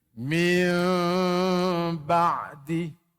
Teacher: Kalau iqlab, nun tu jadi mim.